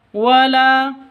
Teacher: la panjang dua ketukan karena ada alif diawali dengan fathah. Ya, ini alif terus sebelumnya fathah, mad asli atau mad tabi'i.